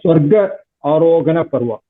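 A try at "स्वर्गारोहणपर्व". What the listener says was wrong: Swargarohana is one word. So we can't split it as Swarga and Arohana. Swargarohana Parva.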